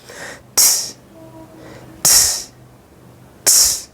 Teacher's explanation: No vibration in the vocal cords.